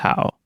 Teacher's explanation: syllable that consists of three parts its initial final and tone the initial of this syllable is H its final is ow and it has a third tone